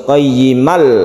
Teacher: lam kita sebut dengan Idgham bilagunnah idgham artinya masuk-masuk kelam dari tanwinnya itu tidak dibaca artinya sudah melebur ke Lam tasydid lam · itu tidak dibaca artinya sudah melebur ke Lam tasydid lam jadi kita langsung qayyimal tanpa berdengung tanpa dipanjangkan